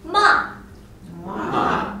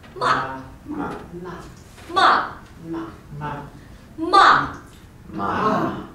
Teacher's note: That's the fourth tone. Down. Down from here, here.